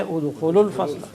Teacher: We will drop the waw because of iltiqa sakinain.